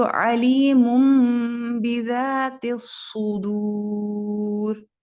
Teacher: क्योंकि तनवीन के बाद बा है, तो इसलिए ये अब मीम से बदल जाएगा, मीम साकिन हो जाएगा। हम इसको अलीमुम बिज़ातिस सुदूर पढ़ेंगे।